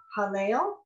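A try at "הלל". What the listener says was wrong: right. Hallel. Yes, very good.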